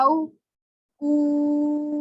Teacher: اب یہاں پہ او، یہ پتہ چل گیا ہمیں واو ساکنہ سے پیچھے زبر ہے، تو ہم نے اس کو نرمی سے اور جلدی سے پڑھنا ہے۔ او او، اس کو تو کھینچ کے پڑھا کیونکہ یہ حروف مدہ ہے، واو ساکن سے پیچھے پیش ہے